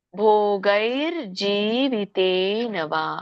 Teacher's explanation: ತೆ ಆದಮೇಲೆ ದೀರ್ಘ ಇದೆ ಹಾಗಾಗಿ ತೆ ಎಳಿಬೇಕು